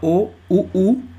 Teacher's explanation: हमारा मुख जो है सर्कुलर हो रहा है ठीक है मतलब गोल आकृति ले रहा है उ उ ठीक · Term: वृत मुखी